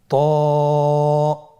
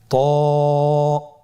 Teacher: জিহ্বার আগা, সামনের উপরের 2 দাঁতের গোড়ার সঙ্গে লাগিয়ে উচ্চারিত হয়।